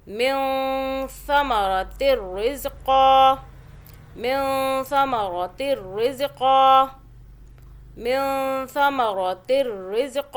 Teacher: نون ساکن ہے، آگے سا اخفاء کا حرف ہے. نون کو چھپائیں گے، زبان کو ٹچ اوپر نہیں کرنا.